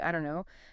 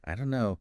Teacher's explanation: But we often hear it as, I don't know, the don't and no just merge.